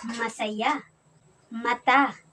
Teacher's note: Si M naman ay napabilang sa panlabi at sa pailong